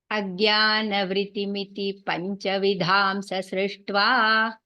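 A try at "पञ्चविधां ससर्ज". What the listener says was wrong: Vidham. First time you missed that anuswaram. Vidham sasrishta.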